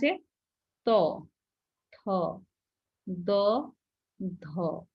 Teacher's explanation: মানে দন্ত দন্তকে স্পর্শ করছে ত থ দ ধ দন্তন্য তাহলে আমাদের জিহ্বাটা গিয়ে দাঁতের মধ্যে লাগছে এজন্য এই পাঁচটা ধ্বনিকে উচ্চারণ স্থান অনুযায়ী নাম দেওয়া যায় হলো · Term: দন্ত ধ্বনি